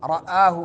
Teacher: حمزہ حلق کے اس حصے سے جو سینے کے قریب ہے